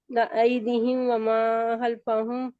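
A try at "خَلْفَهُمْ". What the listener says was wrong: خلف خا کو لائے آپ ہا کی آواز آئی ہے.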